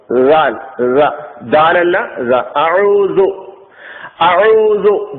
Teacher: നമ്മുടെ മുൻപല്ലുകളുടെ മുന്നിലുള്ള പല്ലുകളുടെ രണ്ടു നിരകൾ ഉണ്ടല്ലോ താഴെയും മുകളിലുമായി കിടക്കുന്ന ആ രണ്ട് മുൻപല്ലുകളുടെ ഇരു നിരകൾക്കും ഇടയിൽ നിന്ന് അല്പം കാറ്റ് പുറത്തേക്ക് വിടുക അതിനനുസരിച്ച് നാവും ചെറുതായി മുന്നോട്ടു വരും ഇങ്ങനെ പറയുമ്പോഴാണ് ദാലിന്റെ ഉച്ചാരണം ദാലിന്റെ ശബ്ദം ഉണ്ടാകുന്നത് ദാൽ ദാലു ബില്ലാഹി ബില്ലാഹി